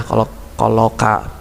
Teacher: kelompok2 pangkal lidah dan langit-langit mulut bagian tengah yaitu huruf Kaf